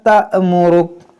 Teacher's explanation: حمزہ ساکنہ ہے، اس کو جھٹکا دے کر پڑھیں گے